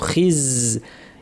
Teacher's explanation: মিনকুম ইল্লা, হামজা শক্ত, খিজ, খিজ জাতে যেন বাতাস না থাকে, নিচের পাটির দাঁতের গোড়ায় জিব্বার শীর্ষ লাগিয়ে তীক্ষ্ণ আওয়াজ, বাতাস বন্ধ। খিজ। ইউফি, এখানে নুন সাকিনের পরে ফা এসেছে, ইউফি এভাবে পড়তে হবে, দাঁত ঠোঁটের উপরে ফা বলার জন্য নাক থেকে গুন্না।